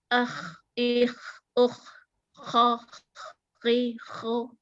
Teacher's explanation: Terus kha-nya itu ada seperti ngorok.